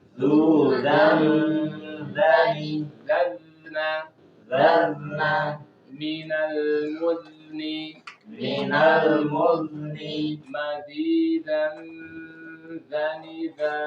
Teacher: langsung menuju ke makhrajnya za, yaitu pertemuan antara gigi seri dan ujung lidah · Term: huruf za